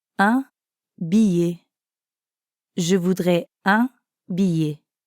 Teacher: Notice the y sound at the end of billet.